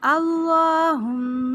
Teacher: اللہم میم مشدد غنہ کریں گے لیکن میم کو لمبا نہیں کرنا